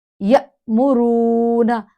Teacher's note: واو ساکن ہے اور اس سے پہلے پیش ہے، تو یہاں ایک الف سٹریچ ہونا ہے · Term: واو مدہ